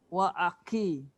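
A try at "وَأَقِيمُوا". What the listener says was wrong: Kalau ki dia jadi kaf. Belakang lagi. Qi. Ki tu tempat kaf tu sebenarnya Kak Belakang. Qi. Dia dekat dengan kha. Qa. Cuba Kak sebut qa. Dekat mana keluar qa, kat situ juga keluar untuk baris bawah qi. Qa, qi. Tempat yang sama.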